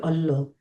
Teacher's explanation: اس میں لام جو ہے وہ موٹا کر کے پڑھا جائے گا